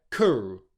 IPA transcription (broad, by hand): kʊr